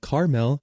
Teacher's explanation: If you say it with 2 syllables like caramel, then you're likely from the Midwest or some parts of the West.